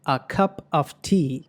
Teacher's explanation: ఈ ఫ్రేజ్లోనే మనకి 2 ష్వాలు కనిపిస్తున్నాయి. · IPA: /ə/